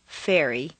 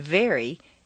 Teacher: say F and then simply add some voice to it · Although F and V are in exactly the same position, F is a hiss and V is a buzz.